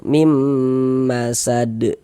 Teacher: kita tahan sejenak suara kita gunnahkan kira-kira sepanjang 2 harokat